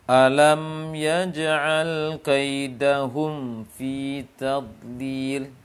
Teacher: Mim tidak jelas karena sudah tergabung ke makhraj fa.